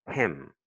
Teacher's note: Ah, aussi, il faut remarquer aussi en anglais, le M est plutôt nasal, beaucoup plus nasal qu'en français